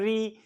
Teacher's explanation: जुबान ऊपर जाके झटके से नीचे आती है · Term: मूर्धन्य